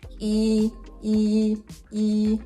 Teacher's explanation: Tone 1, a natural mid to slightly higher mid flat tone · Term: tone one